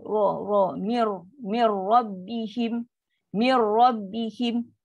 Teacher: Tengah lidah melengkung, automatik ra tu akan jadi bunyi ra tebal.